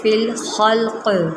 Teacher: یہاں پر قاف ساکن ہو جاتا ہے تو یہاں پر قلقلہ ہوگا. فی الخلق، خا کو موٹا کریں، فی الخلق.